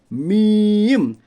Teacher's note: میم کا مخرج ہے دونوں ہونٹوں کی خشکی والا حصہ